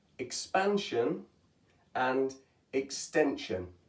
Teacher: For these first four, it's making a jun sound, starting with the j that you hear in treasure, for example. Whereas in expansion and extension, it sounds almost the same, but it's actually shun. It starts that sh sound.